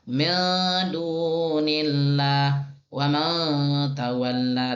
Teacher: Nun sukun atau tanwin dibaca samar, condong kepada huruf sesudahnya dan ditahan selama 1,5 alif 3 harokat disertai gunnah. Gunnah artinya dengung. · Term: ikhfa